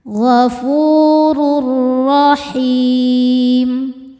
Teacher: tanwin dileburkan atau dimasukkan ke ro tanpa berdengung, tanpa ditahan ya. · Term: idgham bila ghunah